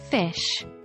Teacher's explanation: pronounced by forcing air through a narrow Gap formed by the lower lip and upper teeth